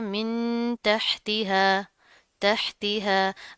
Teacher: नून साकिन है, उसके बाद हरूफ ख्वा में से ता आ रहा है, यहाँ पर भी गुन्ना होगा।